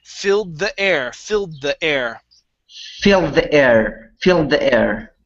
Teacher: you're going to combine the d sound with the th